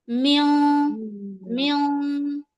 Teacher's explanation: جب نون ساکن کے بعد حرف اخفا کے 15 حرفوں میں سے کوئی حرف آتا ہے تو ہم نون کی آواز کو ناک میں چھپا کر پڑھتے ہیں